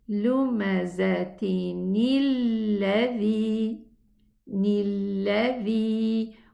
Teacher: And the rule says if two sukoon came after each other, the first one is a noon, we are going to pronounce it with a kasra. Lumazatin, this is the with the tanween, but we are going to say lumazatinilladhi, nilladhi.